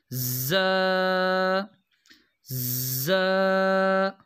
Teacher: زا کی جو آواز ہے یہ سخت اور سیٹی والی ہوتی ہے